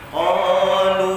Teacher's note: Qalu harfu qaf, pangkal lidah. Qalu isti'la, terangkat pangkal lidah kita.